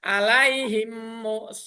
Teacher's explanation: Jadi idgham mutamasilin atau idgham mimi itu apabila ada mim sukun bertemu dengan huruf mim, maka cara bacanya memasukkan suara huruf mim mati ke dalam huruf mim setelahnya